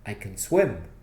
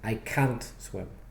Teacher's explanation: don't stress the word can stress the verb after it stress the word swim